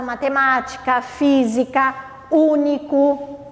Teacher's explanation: então essas são chamadas de paroxítonas e a antepenúltima proparoxítona aquela que a sílaba mais forte vai ser antepenúltima